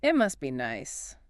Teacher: It gives up on the T. The T stands between the S and the B. So it gets entirely elited.